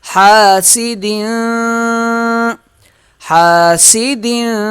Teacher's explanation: ہا الف زبر ہا، سین زیر سی، حاسی، ہا کو ایک الف کی مقدار کھینچ کے پڑھیں گے۔ دال دو زیر دن، غنہ کریں گے۔